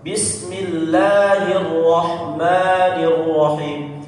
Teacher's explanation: Jadi yang dua harakat tepat, nggak perlu dipanjang-panjangin.